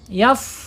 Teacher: Kalau kita bacanya yap ya dia mentog tertutup ya. Sedangkan fa ini ee punya sifat mengalir ya udaranya.